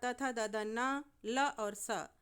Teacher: लुतु लसान नाम दंता ल त से मतलब त वर्ग अर्थात त थ द ध न ल और स ये दंत से उच्चारित माने जाते हैं। अर्थात जब इन वर्णों को आप बोलेंगे तो आपकी जीभ दांत को छूती है। इसलिए दंत वर्ण कहलाते हैं।